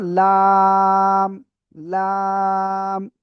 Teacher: জিহ্বার আগার কিনারা উপরে মাড়ির দাঁতের গোড়ার সাথে লাগিয়ে এই অক্ষরটা উচ্চারণ হবে চার আলিফটা নিয়া। দেখেন, কফ কাফ লাম তিনটা অক্ষরে চার আলিফ করে টেনে পড়তে হবে।